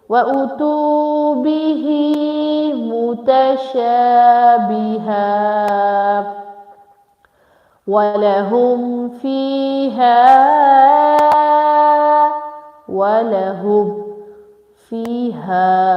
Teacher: ha with alif and madda together, so make it long for 6 seconds